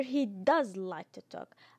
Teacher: I stressed the emphatic do